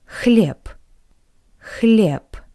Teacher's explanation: P, p. Because the voiced consonant b is at the end of this word. That's why it's read like the voiceless consonant p